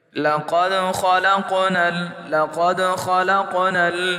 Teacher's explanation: خا موٹا حرف ہے، موٹا پڑھیں گے۔ اسی طرح قاف موٹا بھی ہے، موٹا بھی پڑھا جائے گا، اور حروف قلقلہ میں ہونے کی وجہ سے جھٹکے سے بھی پڑھا جائے گا